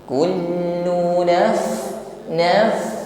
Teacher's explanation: huruf fa bersukun, nampak sifat yang menyertainya hamas, jaroyan dan nafasi, alirkan nafas.